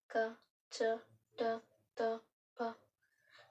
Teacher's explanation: ಕಂಪನವನ್ನ ಉಂಟು ಮಾಡ್ತಾ ಇಲ್ಲ, ಕಂಪನ ಉಂಟು ಮಾಡ್ದೇನೆ ಹೊರಹೊಮ್ಮುವಂತ ಅಕ್ಷರಗಳು ಅಘೋಷ ವರ್ಣಗಳು. ಕಂಪನ ಉಂಟು ಮಾಡದೆ ಬರುವಂಥದ್ದು ಅಘೋಷ ಅಂದ್ರೆ ಕಂಠಕ್ಕೆ ಸ್ಪರ್ಶಿಸದೆ ಬರುವಂಥವು.